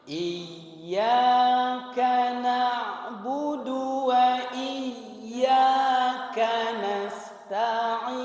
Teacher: ini ain ya dari tengah tenggorokan